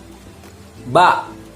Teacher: ba yaitu berasal dari 2 bibir. Nah, harus rapat, tetapi nggak boleh dimasukkan ke dalam seperti ini. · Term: huruf ba